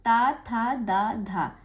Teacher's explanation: आप ता बोल रहे होंगे तो जीभ आपकी दांतों पे लग रही होगी, था बोल रहे होंगे तो भी आपकी जीभ दांतों पे लग रही होगी।